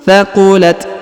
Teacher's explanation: Kemudian huruf ta berharokat sukun, maka kita berikan sedikit hembusan tipis.